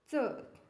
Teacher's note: च तालव्य अल्पप्राण असणारी व्यंजन हे पर्यायांपैकी च आहे